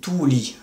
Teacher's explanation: Si vous dites tuli avec un U long, ça va vouloir dire le vent.